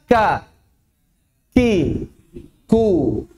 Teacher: huruf kaf tetap mengandung hams. Yang jadi masalah adalah kadarnya. Jangan sampai berlebihan. Jadi kita ucapkan kaf ketika berharokat, ka, ki, ku.